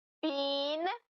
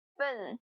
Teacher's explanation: Been is pronounced been or been. Been with a long E sound. Been with a short sound.